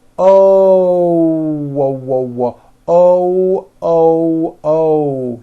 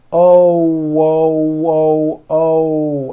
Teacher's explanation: when an American speaker makes an O we end the vowel with a small W sound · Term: hidden W